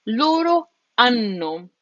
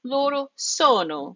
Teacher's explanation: We have to make sure that we hit those two N's twice. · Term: double consonants